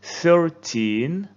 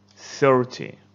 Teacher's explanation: go in all numbers they have the ending tin like this most of the stress goes to the end so you say 13 and in 10 numbers you put the stress on the first syllable like 30